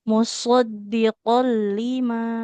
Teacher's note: Dia harus tebal ya huruf sodnya